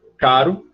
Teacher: o R vibrante simples, que é o que todo mundo produz na palavra caro